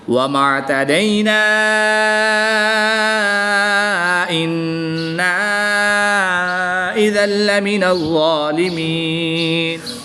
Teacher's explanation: نون مشدد اور میم مشدد میں غنہ آنی ہوتا ہے تو ہم یہاں پر غنہ آنی کر کے پڑھیں گے